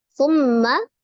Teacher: Summa, di situ ada mim tasdid, mim musaddadah, wajibul ghunnah, akmal matakun ya, paling sempurna. Disempurnakan ghunnahnya, didengungkan, ditekan, ditahan 2-3 harokat dan suaranya masukkan ke al-khaisum, rongga hidung. Summa, di awal itu hurufnya tha ya. · Hati tidak tertukar dengan sin. Ujung lidah ada di ujung gigi seri bagian atas.